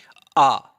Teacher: वे वर्ण सम्मिलित होते हैं जिनके उच्चारण में हमारा मुख विबर पूरा का पूरा खुल जाता है। जैसे कि आ कहने में हमारा मुख विबर पूरा खुल जा रहा है ना। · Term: विवृत